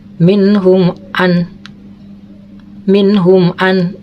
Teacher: Minhum an, jadi harus jelas ya bacaannya. Idhar safawi, idhar itu harus jelas, safawi di bibir, berarti jelasnya di bibir gitu.